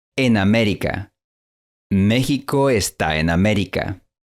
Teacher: En el habla natural, las dos vocales fluyen sin una separación clara.